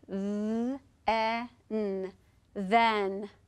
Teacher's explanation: so the digraph TH in the word then is voiced, then, because you can feel your voice vibrate when you say the word then.